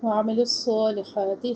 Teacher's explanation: وعملوا الصالحات صوت کے اوپر کڑی حرکت صوت میں سختی اور سیٹی اور موٹا یہ واضح ہو